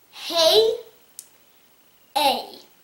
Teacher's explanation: the word hey has the a sound coming at the end of the word and the a and the y are both making the sound together which means it is a diphthong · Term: long a sound